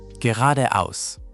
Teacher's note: make sure the R is a softer, almost rolled R sound, and the aus at the end is like house without the H.